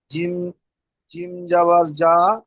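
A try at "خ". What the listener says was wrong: জিম নয়, খ। খ।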